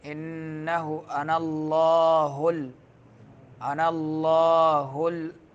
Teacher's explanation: लफ्ज़ अल्लाह को पुर पढ़ना है